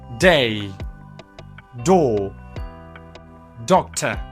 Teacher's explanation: d is a voiced alveolar plosive